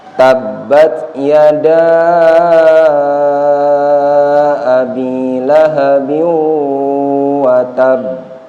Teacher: Tolong ditahan di watab, itu dua ketukan. Ya, jadi qalqalah kubro. Jangan langsung watab, tapi watab.